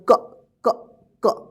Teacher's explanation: अगर हम अ की साउंड को निकाल देते हैं तो उच्चारण होगा क क क